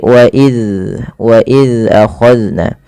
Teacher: Zal yaitu ujung lidahnya menempel dengan gigi seri atas. Maka dan huruf zal tidak boleh terpantulkan, tidak boleh wa iz ya, tidak boleh dipantulkan.